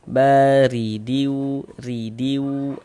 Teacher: huruf rnya itu dibaca tipis dibaca tarkik. Nah ditipiskan huruf rnya bar riwu ridiwu tipis begitu.